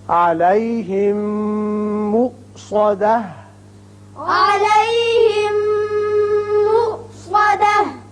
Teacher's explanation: میم ساکن میم متحرک سے ملا، ادغام غننے کے ساتھ ہوگا.